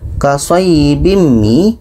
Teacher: Au kasayyibim mi, ada tanwin, tanwin bertemu mim, mim ini tidak termasuk huruf 8, maka ini dengung. Kasayyibim mi, tanwin bertemu mim dengung, dan mim tasydid wajibul gunnah.